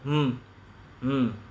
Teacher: makhrajnya apa menempelnya dua bibir atas dan bawah itu makhrajnya mim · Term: huruf mim